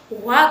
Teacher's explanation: वा का उच्चारण स्थान दंत और ओष्ठ से होता है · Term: दंत ओष्ठम